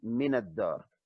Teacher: We don't pronounce the lam because it's a lam shamsiyya.